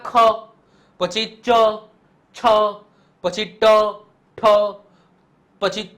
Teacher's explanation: જે મધુર રણકાર વિનાના વ્યંજનો હોય એટલે કે તમે એને બોલોને તો આમ મધુરાઈ થી ના બોલાય આમ કકરો એનો અવાજ હોય અથવા તો આમ કહેવાય ને કે કકરી રીતના બોલતા હોય ને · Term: અઘોષ